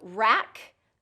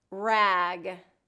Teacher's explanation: K is the voiceless and G is the voiced